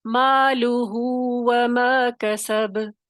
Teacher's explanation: یہاں پہ صلہ ہوگی، صلہ ہوگا، اشباع کے ساتھ پڑھا جائے گا، مالہ وما کسب، کھینچ کر پڑھیں گے.